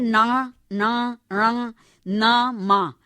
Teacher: इन ध्वनियों को उच्चारण में निश्वास मुख विवर से भी निकलती है और साथ ही नासिका विवर से भी निकलती है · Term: अनुनासिक